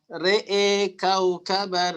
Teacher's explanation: mengimalahkan ro dan hamzahnya